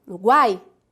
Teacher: vai acontecer que o som começa fraco se aumenta e depois se diminui como se fosse uma onda